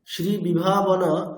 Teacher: জন্য এখানে কিন্তু বিসর্গকে সন্ধি করে আমরা উচ্চারণ করতে পারবো না এখানে আমাদের বিসর্গের মানে স্বাভাবিক যে উচ্চারণ হকারের মত করা সেটা করতে হবে